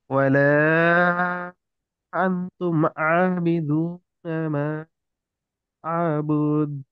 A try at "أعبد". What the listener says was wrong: আ'বুদ, আ'বুদ, কোনো টান হবে না।